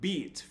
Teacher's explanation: most people pronounce the vowel in the word beat for around 109 milliseconds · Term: short vowel